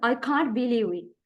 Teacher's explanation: High pitch, especially on believe